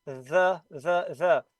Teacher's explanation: with this th the vocal cords are tiny muscles they are vibrating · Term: th voice sound